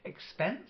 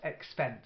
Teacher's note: you stress on the second syllable